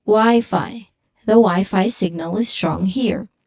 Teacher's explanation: There should be an equal stress on both syllables.